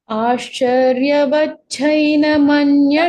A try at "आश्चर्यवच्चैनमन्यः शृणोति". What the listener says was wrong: छैन न छैन च आश्चर्यवच्चैनमन्यः शृणोति छैन न छ अल्पप्राण च चैन Vacchaina. Va is a dvitva. Ascharyavatchainamanya shrunoti.